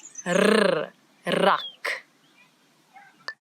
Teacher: it's the rrr, as if your tongue is jumping up and down in your mouth